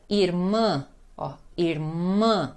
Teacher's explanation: A sílaba mais forte é o mã, é nasal e é forte.